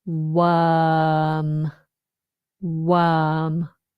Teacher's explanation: We do not pronounce the R. We just have the long vowel worm. Worm.